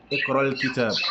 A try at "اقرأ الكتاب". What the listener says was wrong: You put kasra on it. Yeah, because it ends with a sukun, but for the sake of joining a sukun to another sukun, yeah, we'll put a kasra. Alright, so it's اقرأ الكتاب.